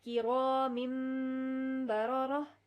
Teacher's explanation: اب یہاں پہ ہے کرامن، میم دو زیر من، تو نون ساکن سے پہلے ہمارے پاس آ گیا ہے، با سے پہلے ہمارے پاس نون ساکن ہے، تو اس نون ساکن کی آواز کو ہم میم میں کنورٹ کریں گے